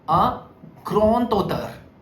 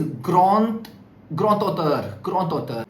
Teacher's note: the sound of d will change to t